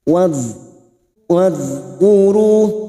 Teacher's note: Wadhkuru, huruf dzal sukun, hati-hati memantul bukan qalqalah. Huruf dzal sukun memiliki sifat jahr dan rikhwah, yaitu tertahannya nafas ketika mengucapkan huruf tersebut.